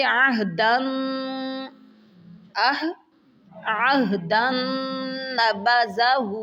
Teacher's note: نون مشدد آ گیا ہے تو نون کے اوپر کیا کریں گے؟ غنہ کریں گے۔